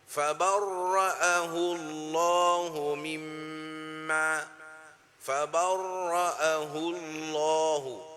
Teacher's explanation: le mot Allah prononce plein la bouche